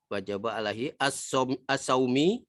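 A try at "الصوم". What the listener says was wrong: man as-saum. Enggak ada waw di sini loh.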